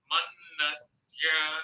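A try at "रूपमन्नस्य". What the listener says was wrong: Na anudata. It is na anudata. Anudata, anudata, not swarita. Na is anudata, ya is udata.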